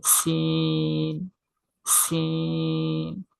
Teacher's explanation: 3 আলিফ লম্বা করে বা 3 আলিফ পরিমাণ টেনে পড়তে হবে